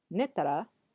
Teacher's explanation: Or you can even drop the do and just use the tara with a rising intonation